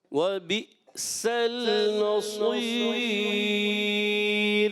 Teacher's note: سین باریک، صاد کو موٹا کریں گے اور پھر آخر میں را باریک کر دیں گے